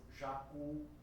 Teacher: a última sílaba é a mais forte, é oxítona